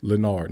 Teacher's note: emphasizing the second syllable of his name